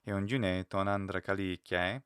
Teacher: you see a rising pitch on the ke, which is usually right before a comma or a pause, is where Italians and Greeks alike have a reasonably noticeable final syllable pitch increase.